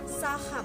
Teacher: selanjutnya yaitu konsonan bersuara yakni phone H dibentuk dengan melewatkan atau arus udara diantara pita suara yang menyempit sehingga menimbulkan bunyi desis tanpa dihambat ditempat lain